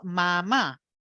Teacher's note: el tono de voz dentro de la primera sílaba es constante por eso suena como un robot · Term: F cero estática